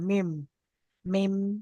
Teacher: দুই ঠোঁটের শুকনো অংশ মিলিত হয়ে উচ্চারিত হয় মিম